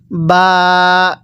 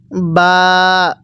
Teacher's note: এই বা টা দুই ঠোঁটের মাঝখান থেকে উচ্চারণ হবে